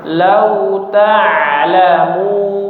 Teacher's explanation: Huruf ain ya, dari sisi suara dia bainiyah atau tawassut ya, jadi suaranya mengalir sedikit ya, agak mengalir.